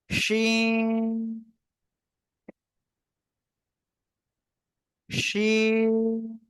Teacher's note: এই যে দেখেন, এই যে একটা অক্ষর লিখলাম, ঠিক আছে, উপরে 3টে নুক্তা দিলাম, ঠিক আছে, তাহলে এটা কি হবে, শা শা শব্দ করে আওয়াজ করে উচ্চারণ করতে হবে এবং 3 আলিফ টান হবে।